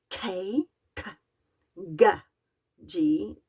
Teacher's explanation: the back of the tongue raises up it rises to meet your soft palette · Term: soft pallet consonants